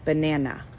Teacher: the unstressed part is at the very end so the stressed part is in the middle